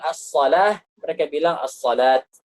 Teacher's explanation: Sesuai dengan lahjah sebagian orang Arab yang waqaf pada hak ta'nis itu dengan ta. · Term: waqaf dengan ta